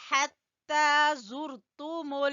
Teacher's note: ہا کو گلے کے درمیان سے وسط حلق بولتے ہیں